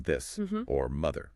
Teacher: the voiced one where your vocal cords vibrate like in this or mother.